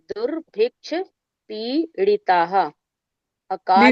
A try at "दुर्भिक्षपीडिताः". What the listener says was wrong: दीदी ड़ा नहीं है, ये ड है।